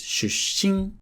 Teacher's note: Watch the double consonant ‘shusshin’. It's not ‘shushin’, it's ‘shusshin’.